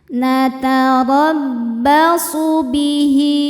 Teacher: Ro dibaca tafhim karena harakatnya di atas yaitu harakat fathah. Cara bacanya ro ditebalkan.